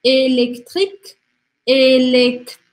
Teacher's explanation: O T é na ponta da língua. E o R volta lá para a garganta. · para a gente fazer o som do C, que é um C como se fosse um K, né? É aqui na garganta.